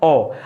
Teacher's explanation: ओ में क्या होता है, आपका होठ एकदम गोलाकार हो जाता है